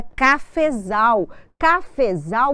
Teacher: o fé que era a minha sílaba tônica na palavra de origem passou a se chamar subtônica · o zal é a sílaba tônica